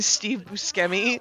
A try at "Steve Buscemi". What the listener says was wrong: No, you've definitely been pronouncing it wrong. It is Steve Buscemi. Like the SH kind of.